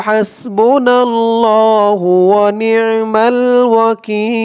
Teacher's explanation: ওয়াকিফ করার কারণে জের পরে ইয়া সাকিন এক আলিফ টানটা তিন আলিফ টান হয়ে গেছে